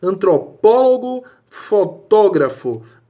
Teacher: A sílaba tônica está na antepenúltima. É onde está o acento.